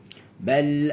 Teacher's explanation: lidah saya ni dia flat je, tak ada lekuk